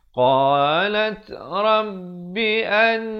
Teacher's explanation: Lat diberikan hamasnya, bunyi angin tu. Qalat rabbi an, dengungkan di sini wajibul gunnah.